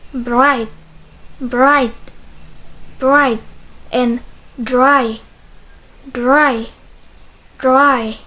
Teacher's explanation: sounds r will be pronounced thick if it comes after a voice consonant